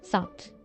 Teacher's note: Closure of the second stop in sequence is made before the release of the first stop.